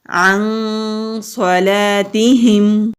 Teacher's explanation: صاد مستعلیہ حروف میں سے ہے، موٹا پڑھیں گے